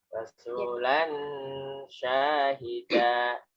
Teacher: Jadi kalau berhenti dalnya tidak dan tapi da.